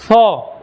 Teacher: ये हमारा जीभ दांत पे जाना चाहिए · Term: दंत स